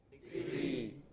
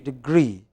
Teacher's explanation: Stress on the second syllable.